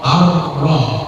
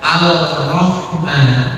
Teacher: tulisannya alif lam ra, tapi lamnya tidak dibaca, langsung dibacanya langsung ke huruf ra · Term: idgham syamsiyah